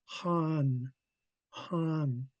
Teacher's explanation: It's coming from the back, and it's going to have a raspy h sound to it. So, a lot of air coming from the back of the throat.